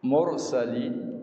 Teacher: ra tafkhim ra dibaca dengan tebal